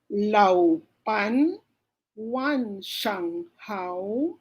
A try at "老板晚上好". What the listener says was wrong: One, don't forget this one, ha? One, third intonation. Pag third intonation, meron talaga tayong curve on how we pronounce the phonetics or the pinyin.